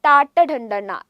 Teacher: നാവ് ഒന്ന് മടക്കിയാണ് ഉച്ചരിക്കുന്നത് അപ്പൊ മൂർധന്യത്തിലാണ് തട്ടുന്നത് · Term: മൂർധന്യ അക്ഷരങ്ങൾ